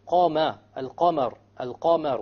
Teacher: The فَتْحَ of the قَاف is heavier because the قَاف is of the letters of تَفْخِيم.